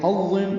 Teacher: ہا وسط حلق سے ادا کریں گے